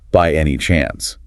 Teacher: that upward inflection at the end makes it a yes no question